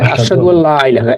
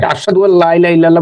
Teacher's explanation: এই যে এটা হচ্ছে ইয়ার মালুম, এই যে আপনার আরবি পড়ার ক্ষেত্রে ইয়ার মালুম পড়ছিলেন না, মনে আছে? যে হ্যাঁ, নুন সাকিনের পরে যদি লাম থাকে তাহলে নুন সাকিনটা উচ্চারণ হবে না, এটা ড্রপ হয়ে উচ্চারণ হবে না, রাইট ড্রপ হয়ে লামকে ধরবে।